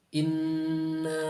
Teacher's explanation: Ee seperti salah satu contohnya itu huruf nun Inna Nah itu huruf nun itu sangat jelas ya dibacanya tidak ada nafas yang menyertai ketika keluarnya